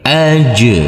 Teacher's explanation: Jim sukun ini adalah bacaan Qalqalah maka harus kita pantulkan